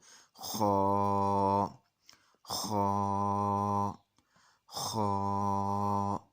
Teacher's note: जहाँ से अक्सर लोग जब हम सोते में देखते हैं खराटे लेते हैं, जिस मुकाम से खराटे अदा होते हैं यानी गला और जो हमारा नाक है, गले और नाक का जो जोड़ है, जहाँ से नाक हमारा अंदर की जानिब ख़त्म होता है और गला शुरू होता है, ये वहाँ से पढ़ा जाएगा। तो मोटा करके पढ़ेंगे, पुर पढ़ेंगे और इसको मुंह भर के मुंह के अंदर ही मोटा करने की कोशिश करेंगे।